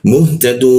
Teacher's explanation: Tad ta dan dal menggunakan ujung lidah ditempelkan ke gigi dia tadu tadu seperti itu ya tadu bertemu wau dan nun dimatikan maka seolah-olah muncul bendera di huruf dannya maka kita panjangkan dunya itu tiga ketukan